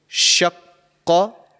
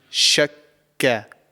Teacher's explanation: So the letter Qaf is actually pronounced from the farthest part of your mouth. So right at the back of your mouth, just before the throat. So this letter, the sound of this letter comes from that area within your mouth.